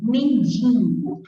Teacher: Então, se eu falo, por exemplo, mendigo, não existe esse N aqui na palavra mendigo. Então, que pronúncia é essa, nasalizando o I?